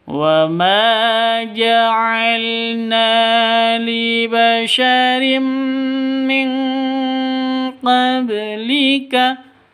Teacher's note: Cara bacanya samar didengungkan siap-siap ke huruf qofnya ya. Non matinya ditambah dengan ng yang ditambah dengan ng itu ketika bertemu dengan kof dan atau kaf seperti itu.